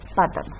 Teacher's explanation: En el caso de plátano, aquí hay otro dífono consonántico compuesto por PL, y lo simplifica y dice pátano. Tan simple como eso, es un proceso de tipo estructura silábica donde se reduce la estructura de la sílaba.